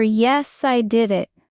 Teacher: When celebrating, your voice should rise, not fall.